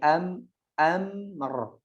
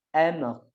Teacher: Pakai a, jangan pakai o. Pakai ain.